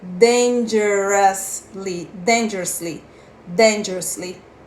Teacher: É dangerous. Você não pronuncia com som de O e com som de U. É como se fosse um A.